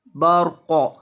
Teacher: را کو اور قاف کو پر کرنا ہے، موٹا کرنا ہے۔ را ساکن ہے اور اس سے پہلے زبر ہے۔